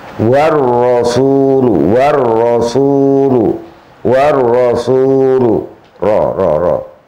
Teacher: lebih di ujung lesan, lebih di depan ujung lesan, ujung lidah, dekat dengan nun, tapi nun agak ke dalam sedikit. Lah roknya agak keluar sedikit. · Iku makhraj ra, lebih di ujung lidah.